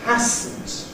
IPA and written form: ˈhæsn̩t (hasn't)